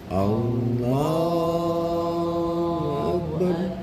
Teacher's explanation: Lafaz Allah dibaca tebal ketika diawali fathah sama doma.